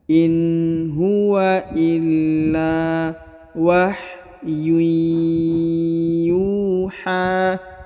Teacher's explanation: Huruf ya berharokat sukunnya, harokat tanwinnya langsung melebur dan menghilang ke huruf ya di depannya